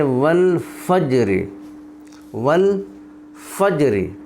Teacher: را ساکن، پھر جیم پر ساکن اور اس سے پہلے فا پر زبر ہے تو اس لیے یہ را پر پڑھی جائے گی